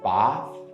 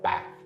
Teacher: would be pronounced bath with a long vowel um whereas in northern english it would be a short vowel bath [Music] in some words uh some sounds are dropped by